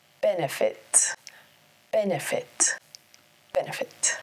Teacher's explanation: Benefit has three syllables. Benefit. Emphasis is on the first syllable.